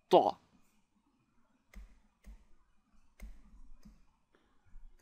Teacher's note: we take the middle of the front part of the tongue and place it at the roof of the mouth